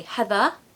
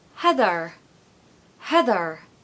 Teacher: in the modern R.P accent we say heather, because ER endings tend to be a schwa, but in the Scottish accent they say heather, heather. They don't use a tapped R usually if it's on the end of the word, it's usually if it's in the middle.